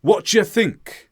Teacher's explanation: we shortened do and you to what you think, and it just becomes ja